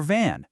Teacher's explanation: Can you feel that vibration? The V sound is a lot like the F sound, but you use your voice to make it buzz.